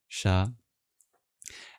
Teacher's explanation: the S with the accent above it is just the regular palatal sibilant like we have in English, the SH sound